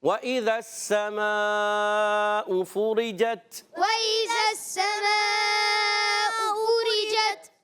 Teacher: سین پر زبر ہے، حرکت ہے، نہیں کھینچیں گے مگر رک کر ادا کریں گے. سین مشدد ہے، ذرا رک کر ادا کرنا ہے